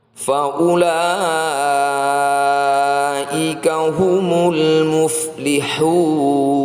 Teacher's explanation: Mad Thobi'i diikuti oleh hamzah. Jadi ini adalah bacaan Mad Wajib Muttasil . Bacalah enam harakat panjang. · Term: mad wajib mutassil